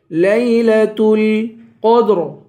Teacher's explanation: لیلۃ القدر، قاف کو پر پڑھیں گے، آخر میں را ہے، اس را کو بھی پر پڑھیں گے